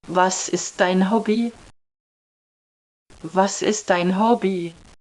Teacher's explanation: Además, la entonación es diferente a la del español. No hay un cambio notable al final de la pregunta, suena más plana.